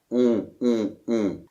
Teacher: donc l’air sort un peu du nez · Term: la nasale on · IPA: [ɔ̃]